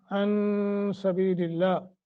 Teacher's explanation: ساکن ما قبل جمع ایک سیکنڈ کی مد ان سبیل اللہ نون ساکن کے بعد سین حروف اخفا میں سے آئے اخفا کریں گے لفظ اللہ کو باریک والمسجد الحرام را کو لمبا کریں گے